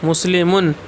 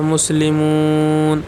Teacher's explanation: آپ نے ضمہ کو کھینچا، واو پیدا ہو گیا